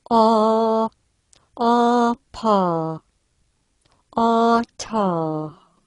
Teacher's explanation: the tongue is quite towards the back, relaxed, and not touching the roof of the mouth. The lips are wide open too. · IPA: /ɑ/